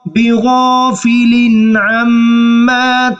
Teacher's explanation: یہاں پر غنہ نہیں کریں گے، چونکہ نون تنوین کے بعد عین ہے، جو کہ حروف حلقیہ میں سے ہے